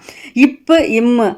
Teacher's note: இப் ம் ஆகிய இரு மெய்களும் மேலிதலும் கீழிதலும் பொருந்துவதால் பிறக்கின்றன